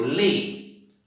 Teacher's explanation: Lei, eu falo num som fechado, eu não falo lei para ser um som aberto. Então, lei tem somente uma sílaba.